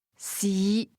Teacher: Fifth tone, low rising